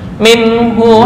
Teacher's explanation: jangan dengung nun mati bertemu ha izhar halqi